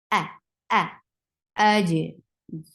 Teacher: For fatha, open your jaws. Hamza is a sharp sound. This is part of ashadda huruf, so the sound should cut off right away, and the sound is very pinchy sound.